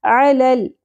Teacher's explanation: عین ویسے حلق سے، لام زبر، لام ساکن پہ قلقلہ نہیں ہونا چاہیے